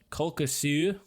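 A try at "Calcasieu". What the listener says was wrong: I don't know about that last vowel, but the rest of it sounds good. Calcasu.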